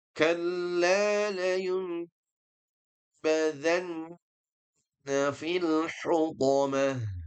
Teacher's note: Nun mati ketemu ba berarti dia hukumnya adalah iqalab atau qalb yaitu diubah menjadi mim dan didengungkan.